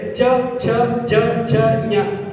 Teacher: ತಾರ ಅಂದ್ರೆ ಗಂಟಲಿನ ಸ್ವಲ್ಪ ಮೇಲೆ ಚ ಛ ಜ ಛ ನ್ ಎಲ್ಲ ತಾರದಿಂದ ಹುಟ್ಟುತ್ತೆ